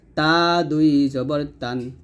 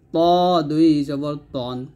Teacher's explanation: তবে এখানে তা টা পাতলা হবে ত টা মোট হবে